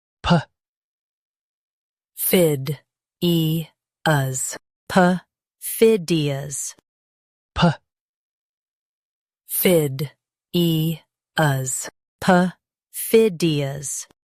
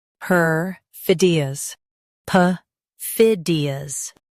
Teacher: Stress fid and keep e light.